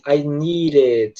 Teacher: Então a pronúncia acaba saindo assim, I need it. Ou seja, o D vira um R. · Você percebe que nessa frase, a palavra need, né, que é o verbo precisar em inglês, ele termina com D, né? Quando eles vão conectar esse som de D, que é o som da palavra need, com a próxima palavra, eles tendem a transformar esse D em som de R. Então a pronúncia acaba saindo assim, I need it.